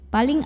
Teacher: ada hukum ikhfa karena nun sukun bertemu dengan huruf qaf maka bunyi Nun sukunnya tidak jelas n melainkan disamarkan menuju huruf qaf disertai dengungan dan paling dengung dengungnya besar karena koff makhrajnya jauh dari Nun